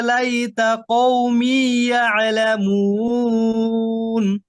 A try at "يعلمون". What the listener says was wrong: আইনের সুকুনটাকে আরেকটু ধরেন, আরেকটু সময় দেন, হ্যাঁ। قال يا ليت قومي يعلمون يعلمون। এই যে এই ছুটে যাবে না। ইয়ালা কি হবে? ইয়ালামুন। আপনার আইন কলকলা হয়ে যায়, এরকম হয়ে যায়। ইয়ালা ইয়া, হ্যাঁ হ্যাঁ, এটা খেয়াল করবেন একটু, হ্যাঁ।